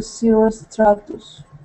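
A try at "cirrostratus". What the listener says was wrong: Yeah, that's right, cirrus stratus.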